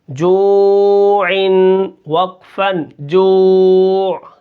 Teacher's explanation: آخر میں عین کو بھی ہم نے نکالنا ہے اور اس کو ساکن کر دینا ہے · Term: وقف بالاسکان